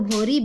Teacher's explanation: ल के स्थान पर र का प्रयोग होता है